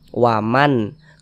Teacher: Tidak disamar-samarkan bunyi nun sukunnya tapi jelas. Waman. Kemudian dibaca pendek. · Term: izhar halqi